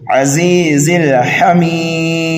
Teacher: حمید کو ہم 1 2 3 الف کے برابر کھینچ کر کے پڑھ سکتے ہیں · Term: مد عارض